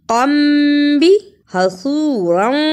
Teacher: صاد کی جگہ پہ سین کی آواز نہیں آنی چاہیے